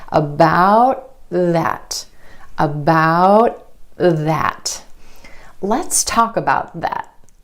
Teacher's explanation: The tongue tip stays up for the T and goes straight into the TH sound. The tongue tip goes under the front teeth for the TH sound. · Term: held T